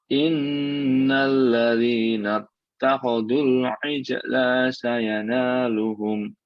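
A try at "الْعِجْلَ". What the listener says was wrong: Allahnya pendek ya Pak. Allahnya pendek. Al-ijla sayanaluhum.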